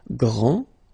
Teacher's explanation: Okay, so we've got a little bit the same situation here as we had previously with français and française, because we don't pronounce the final S in français, and it's exactly the same thing. This final D is not pronounced